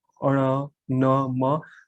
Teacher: जो अलग अलग जो वर्ग है, उन वर्ग का जो पांचवा जो अगर आप कह सकते हो जो वर्ण है, हर वर्ग का जो पांचवा जो वर्ण है, जैसे ठीक है, इसके बाद अण, न, म। तो इनका जब हम उच्चारण करते हैं तो इनका उच्चारण करने के साथ साथ हवा जो है वो नाक से भी निकलती है। ठीक है। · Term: अनुनासिक